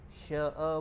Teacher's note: Sya'a pula di situ dia jadi hukum mad wajib. Mad wajib muttasil panjang 4 ataupun 5 harakat.